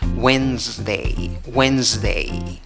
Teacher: Divides la palabra en 2 sílabas. La sílaba que lleva la fuerza de voz es la primera, contando de izquierda a derecha. · Se escribe con S, pero la pronunciación va con Z. La D no suena en esta palabra.